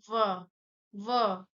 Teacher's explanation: और ओठ भी देखिए, ओठ भी सटेगा, सटेगा, स्पर्श होगा दोनों ओठ, देखिए। और दांत और ओठ दोनों पे बल जा रहा है, इसलिए दंत प्लस ओष्ठ बराबर दंतोष्ठ